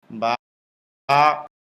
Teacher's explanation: স্বাভাবিক অবস্থায় মুখ যেমন ঠোঁট দুইটা মিলে থাকে, মেলানো ঠোঁট খুলে দিলেই হয়ে যায়।